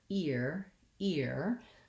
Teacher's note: that's because i'm gliding from the front with my e to the back with my er · you can count on you're saying that e vowel correctly then i have to glide into my tight back american r so e er are the two sounds